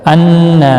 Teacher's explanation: انا نون مشدد پر گنہ ہوگا نا الف مدہ بھی ہے ایک الف کی مقدار کے برابر